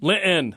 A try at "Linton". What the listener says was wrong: Yeah, no, don't say Linton. Say the T.